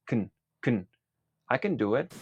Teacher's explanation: Primero vamos con la pronunciación de la palabra can. La vocal E en la palabra can se suele reducir a una schwa, ya que por lo general esta palabra se suele decir en su forma reducida, que es kn, kn.